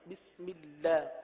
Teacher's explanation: بسم اللہ، با سین میم آسان ہے، اللہ کے لام کو باریک پڑھیں گے